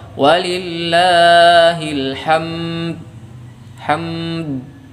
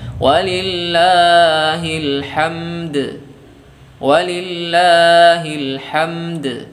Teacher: huruf dalnya ada tapi kita tidak pantulkan.